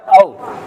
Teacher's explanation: होंठ हरकत तो कर रहे हैं लेकिन मिल नहीं रहे हैं